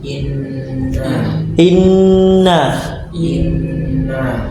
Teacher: makhraj huruf nun dari ujung lidah menyentuh langit-langit di bawah